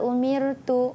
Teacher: Mir tu bacaannya nipis. Ranya nipis. Jangan umir.